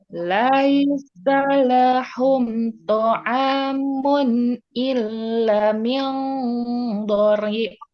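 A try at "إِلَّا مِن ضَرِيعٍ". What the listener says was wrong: Illa, panjang illa min dhari'a. Jelaskan ain. Dhari'a.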